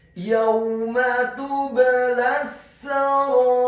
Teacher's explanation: Huruf waw-nya dibaca sukun dengan posisi mulut kita agak tertutup dan dengan gerakannya agak cepat. Selanjutnya huruf mim-nya dibaca fathah satu harokat. · Yauma tublas sarair. Yauma, huruf ya-nya dibaca tipis, fathah satu harokat